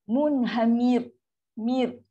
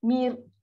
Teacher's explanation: So automatik raw ni dah sukun dan raw pun kena sebut cara nipis.